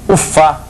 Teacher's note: O O é artigo, então é sempre fraco, sempre átono.